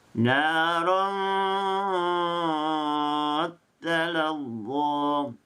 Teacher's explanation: Ditekan, disabjukan, tasydidkan pada perkataan ta. Dan ra berbaris 2 didengunkan dulu. Dibunyikan dengunnya dulu, barulah dimasukkan kepada ta yang berisyadu. · Bagi bacaan Bazi, ta ditasydidkan dan ra diikhfakan dahulu.